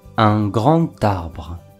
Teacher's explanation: La liaison créée par la lettre D est le son T.